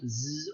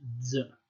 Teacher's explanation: So the pronunciation, just to sum this up, could have been either z, so just a sibilant z, or maybe an affricate z. Okay, so this could have been more like a zai.